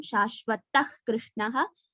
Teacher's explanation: Visargam followed by ka, half hakara has to come.